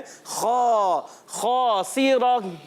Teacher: गुन्ना नहीं करेंगे और खा को पुर रखेंगे, उसके साथ अलिफ मौजूद है, इसको भी पुर रखना है · और इसका अलिफ भी मोटा हो जाएगा। सीन को बारीक रखना है, सीटी वाले हुरूफ में से है, रा पर ज़बर आने की वजह से पुर हो जाएगा।